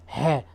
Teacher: ह का होता है कंठ। जब हम बोलेंगे ह को जब बोलेंगे तो अंदर गले से निकल के आएगा